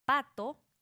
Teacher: para pronunciar la P de pato, cerramos los labios y soltamos el aire de golpe.